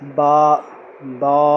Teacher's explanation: اور با بس ایک الف کے برابر لمبا کریں گے